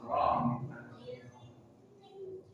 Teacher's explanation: Ro maksudnya ujung lidah bertemu dengan gusi 2 gigi seri atas ro. Ingat, ro punya sifat takrir, getaran tetapi tidak boleh lebih dari sekali. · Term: huruf ro